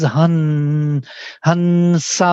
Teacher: nasal with sa will be the same as han, sa, because sa is dental and n is dental, they go together. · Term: dental n